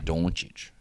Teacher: Luka Doncic pronounced with a ch sound, not a k sound